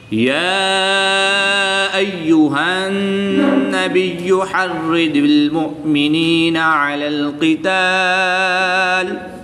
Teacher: یا ساکن سے پہلے نون کے نیچے زیر ہے تو یا مدہ ہوگا۔ ایک الف یعنی 2 حرکات کے برابر کھینچ کر پڑھیں گے